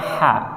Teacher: Nah, ha itu di mana? Di ujung, di pangkal, ya, di pangkal tenggorokan ha. Bawahnya kha. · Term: makhrajnya ha